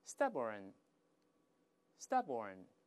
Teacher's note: 但美国人都是 stubborn， 后面加个儿化韵就好了